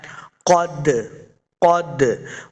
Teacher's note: قد، قد، آگے دال ساکن ہے، دال حروف قلقلہ سے ہے۔ ہم نے اس کو خوب واضح کر کے یعنی جنبش حرکت دے کے پڑھنا ہے۔ قد، قد، حروف قلقلہ جب بھی ساکن ہوتا ہے تو ہم نے اس کو خوب واضح کرنا ہوتا ہے، جنبش یعنی حرکت دے کے پڑھنا ہوتا ہے۔